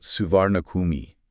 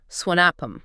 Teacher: Like they kind of drop that hard R sound